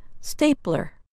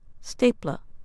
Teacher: In American English, that sound is a strong er, as in stapler. In British English, the sound is closer to ah, stapler. It has paper, pens, tape, erasers, rubber bands, binder clips, paper clips, and a light.